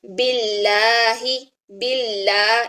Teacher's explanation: جب اس میں جلالہ سے پہلے زیر آ جائے تو اس میں جلالہ کا لام باریک پڑھا جاتا ہے